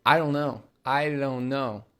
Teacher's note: There's a very, very soft D on that don't, because a normal English D takes a lot of energy to create.